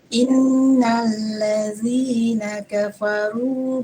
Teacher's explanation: nun bertasydid dibaca dengung dengan panjang 2 harakat. Di in-nya itu ya, bukan di sabdunya itu. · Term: wajibul gunnah